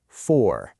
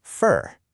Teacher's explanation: you have that strong, stressed sound, for. But then when it's unstressed, just kind of hanging out in a sentence, it softens way down to fur.